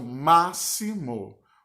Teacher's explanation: Ma é a sílaba tônica e as outras duas são as sílabas átonas.